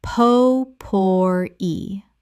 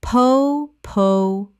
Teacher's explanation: Three syllables with the stress on the final syllable.